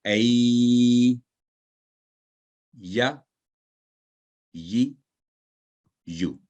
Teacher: जुबान के दरमियानी हिस्सा को तालु की जानिब लगाने से यह हरफ अदा होता है